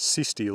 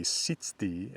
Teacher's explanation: the z which spells the sounds ts typically just becomes s pretty early already